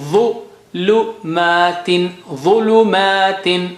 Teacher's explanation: ظ very thick and high sounding.